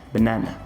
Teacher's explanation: essa primeira sílaba e também a última, ambas levam o famoso schwa sound